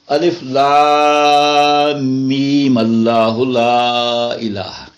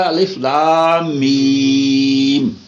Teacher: اچھا، اب اس کا ایک اور قاعدہ سمجھیں کہ اگر ہم اس کو ملا کے پڑھیں، کیونکہ الف لام میم کے اوپر میم کے اوپر زبر ہے، تو ملا کے کیسے پڑھیں گے؟ جب ملا کے پڑھیں گے تو پھر آخری ساکن میم تو پڑھی نہیں جائے گی، پھر اس کو میم کو لمبا نہیں کرنا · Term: وصل